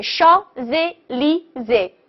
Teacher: S▁连读永远读▁Z▁的音